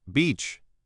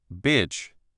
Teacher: I showed her how to stretch her lips wide for E and beach, feeling the tightness. Then, I showed her how to relax her lips and let her tongue drop slightly for the short I in bitch.